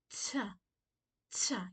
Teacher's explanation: take that T and puff some air out.